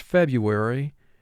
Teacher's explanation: notice in the word february we have a silent r